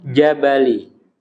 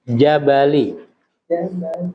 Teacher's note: ingat huruf Jim engak boleh mendesis